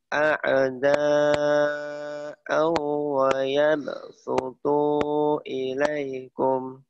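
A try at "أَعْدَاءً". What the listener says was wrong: Jadi ada itu tetap ya. Jadi A-nya juga harus terang, jangan ke jangan dikeainin dulu tapi ada au. Nah, terang lagi. Au.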